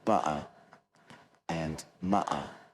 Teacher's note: Unless, of course, you're trying to copy a Cockney accent, which is similar to mine in a way, and where you want to leave the T out altogether and say butter and mutter.